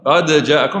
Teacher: وفيه من يفكون الإدغام أي يقرأ بالإظهار قد جاءكم فيقلقلون الحرف